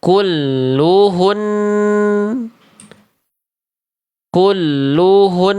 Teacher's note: Jadi annya tetap ditahan. Jangan sampai jadi nggak ada gunnahnya.